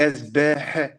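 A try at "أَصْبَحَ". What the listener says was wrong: Attention, c'est un sod. Asbaha. Asbaha.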